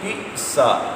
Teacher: حمزہ ساکن ہے، جھٹکے سے پڑھیں گے